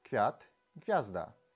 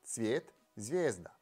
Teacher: Итак, вторая палатализация – это такое правило, согласно которому такие звуки, как к и г, в положении перед передними гласными и, е, меняются в ц и з. Допустим, у нас есть праславянские слова квяту, гвязда.